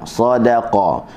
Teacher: huruf dal tetap berada dalam keadaan nipis walaupun dia diapit oleh dua huruf yang tebal